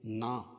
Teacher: الف سے پہلے زبر ہے، الف مدہ اس لیے ایک الف کے برابر کھینچ کے پڑھیں گے